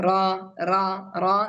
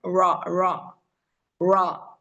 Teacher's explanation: ഫ്രണ്ടിലുള്ള പല്ലിന്റെ തൊട്ട് ബാക്കിലുള്ള അണ്ണാക്ക്, അവിടെയാണ് ഏകദേശം റോന്റെ സ്ഥാനം വരുന്നത്. അപ്പൊ നാവിന്റെ ടിപ്പ് ബാക്കിലാണ് ടച്ച് ആവുന്നത്.